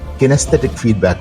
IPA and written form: ˌkɪnəˈsθɛtɪk ˈfiːdbæk (kinesthetic feedback)